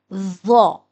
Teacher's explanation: ذو زبان کو دونوں دانتوں کے درمیان لا کر منہ کو گول کریں گے، ذو موٹا حرف ہے اور اس میں بھی آواز کو ہم نے اس طریقے سے رکھنا ہے کہ حرف موٹا محسوس ہو۔